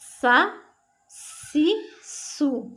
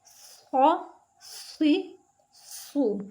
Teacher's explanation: सीन बारीक और सीटी की आवाज़ के साथ पढ़ेंगे, सौद सीटी की आवाज़ के साथ लेकिन पुर पढ़ेंगे, मोटा करके पढ़ेंगे।